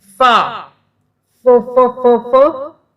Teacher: جب آپ ف بولتے ہیں تو اوپر کے دانت نیچے کے ہونٹوں کو لگتے ہیں ٹچ ہوتے ہیں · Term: مخرج